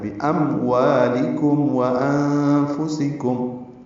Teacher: واو الگ سے واضح ہو، میم الگ سے واضح ہو، ظاہر ہو، اس پہ اظہار ہے، قلقلہ نہ ہو، ادغام نہ ہو